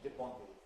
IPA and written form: dep⁼ɑ̃dʀ (dépendre)